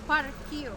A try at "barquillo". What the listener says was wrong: Barquillo with B. Barquillo. Barquillo.